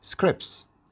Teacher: we delete the T and we say scripts which is easy